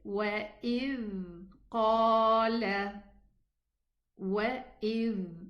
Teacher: You can feel the vibration of the letter Dhal that has a sukoon.